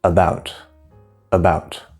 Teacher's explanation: it'll go up and you can hear that about about so the is very small and short and fast and bout is louder longer higher pitch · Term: stress